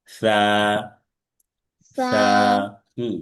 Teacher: জিহ্বার আগা, সামনের উপরের দুই দাঁতের আগার সাথে লাগবে।